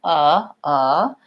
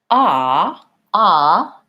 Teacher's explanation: my tongue isn't high or low or front or back it's just resting my mouth is central · my tongue is way down on the bottom my jaw is more open and there's more tension in my tongue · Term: schwa vowel